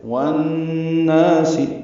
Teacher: والناس میں واو کو نون سے ملائیں گے، ادغام شمسی ہوگا، نا الف مدہ ہے، یعنی ادغام شمسی مع الغنہ ہے یہاں پہ، والناس آواز ناک کے بانس سے مل جائیں گے